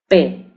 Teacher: oclusivo porque cerramos los labios, ¿verdad? Y porque utilizamos los dos labios para pronunciar ese fonema P. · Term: sonido oclusivo labial